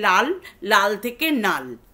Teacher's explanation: সুতরাং লটা নয়ে কনভার্টেড হয়ে যাচ্ছে।